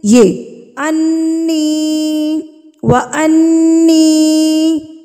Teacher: آپ نے نون کی آواز کو جو ہے نا ناک میں ایک حرکت کے برابر روک کے رکھنا ہے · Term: غنہ